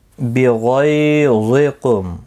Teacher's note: غین اور ظا مستعلیہ ہیں، دونوں پر پڑھے جائیں گے۔ غی یالین ہے، تھوڑا نرمی کے ساتھ کھینچ کر ادا کریں گے، اور میم ساکن ہی رہے گا وقف کی صورت میں، وقف مطلق ہے، یہاں پر بھی آپ رک سکتے ہیں۔